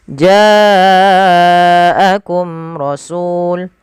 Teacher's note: Pada lafal ja wajib dipanjangkan 4 harakat atau 5 harakat karena ia mad wajib muttasil ditandai adanya hamzah yang datang setelah bacaan mad tabi'i atau setelah huruf mad.